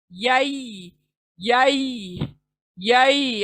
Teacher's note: या बीच के जुबान से अदा होगा